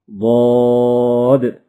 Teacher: زبان کی کروٹ اور اوپر کی داڑوں کی جڑ سے ادا ہوتا ہے۔